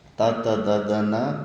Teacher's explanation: ಇವು ಉಚ್ಚಾರಣೆ ಮಾಡುವಾಗ ನಾಲಿಗೆ ಹಲ್ಲನ್ನು ಟಚ್ ಮಾಡುತ್ತೆ. ತ ತ ದ ದ ನ ಎಲ್ಲ ಹಲ್ಲನ್ನು ಟಚ್ ಮಾಡ್ತಾ ಇರುತ್ತೆ. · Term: ದಂತ